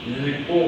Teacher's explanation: 리을 기역 플러스 기역 어간과 어미의 경우에는 어떻게 간다? 리을과 쌍기역 발음으로 간다.